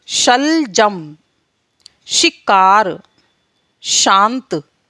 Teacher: तो अभी हमने देखा कि इन 4 वर्णों का उच्चारण किस तरह से होता है। शा वर्ण का उच्चारण जीभ और तालु के बीच घर्षण के कारण होता है।